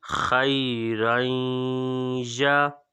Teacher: یہاں پہ ادغام مائل غنہ ہو رہا ہے، تنوین کے بعد یا ہے